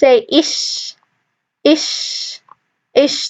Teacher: it's also a whispering sound, which means if you put your hands in your throat, you won't feel your vocal cords vibrating or having any force in them.